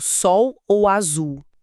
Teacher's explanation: Na maior parte do Brasil, a gente não pronuncia esse L com a língua no céu da boca. a gente pronuncia com som de u, ou seja, na prática, sol, sola, como o sol, virou um ditongo.